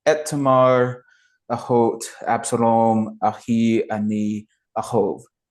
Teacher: each Aleph doesn't really translate into English. It's a glottal stop.